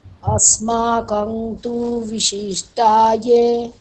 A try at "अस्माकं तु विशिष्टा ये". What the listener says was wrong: হ্যাঁ, এখানে কি ভুল হলো? কং বলছেন আপনি, কং হবে কি? অনুসারটা কি হবে এখানে? অনুসারটা কি হবে? ম হবে? ম হবে? ন হবে কেন? কারণ পরে তকার আছে। তকারটা